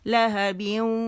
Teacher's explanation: ٹھیک ہے، بیوں، اور اسے 2 کاؤنٹس ہم یہاں پہ ہم وہ کریں گے، غنہ کریں گے، تھوڑی آواز منہ سے اور زیادہ خیشوم سے ناک کے بانسے سے نکلے گی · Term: ادغام ناقص بالغنہ